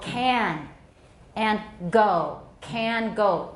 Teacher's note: Those are velar sounds.